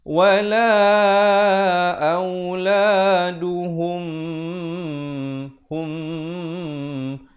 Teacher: Dimasukkan beserta dengung 2 harakat. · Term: idgham mislain saghir